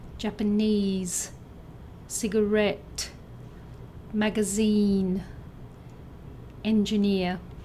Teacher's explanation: words that sound like mandarine with a stress on the third syllable